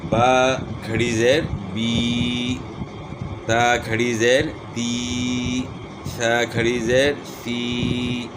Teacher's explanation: پڑی زیر میں تو آپ نے اوپر پڑھ لیا کہ پڑی زیر کو ہم نے کس طرح پڑھنا ہے، ہونٹوں کو نیچے کی طرف کھول کر بغیر کھینچے اور جھٹکا دیے بغیر پڑھیں گے۔ اور کھڑی زیر کو ہم نے کس طرح پڑھنا ہے، ہونٹوں کو نیچے کی طرف کھول کر تھوڑا سا کھینچ کر پڑھیں گے